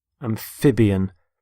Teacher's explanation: Notice the stress on the middle syllable, amphib. Amphibian.